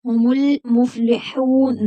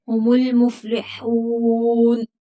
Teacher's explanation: وقف، علامت وقف ہے تو یہاں پر وقف کریں گے اور نون کو ساکن کر دیں گے۔ ہم المفلحون، نا نہیں پڑھیں گے، ہم المفلحون۔